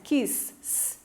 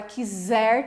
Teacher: Tem som de S, quis. Agora, quiser tem som de Z, né? Por isso que confunde.